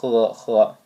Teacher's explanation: It's got a little bit of a glottal kind of friction going on in there.